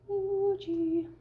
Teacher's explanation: So the tongue is more forward on the E, and it is further back on the ooh.